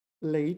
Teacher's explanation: this is one of these rare cases that le is pronounced second tone